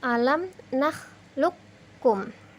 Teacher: qaf mati bertemu dengan huruf kaf, maka cara membacanya kafnya ditasydid sehingga menjadi alam nakhluqkum. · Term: idgham mutaqaribain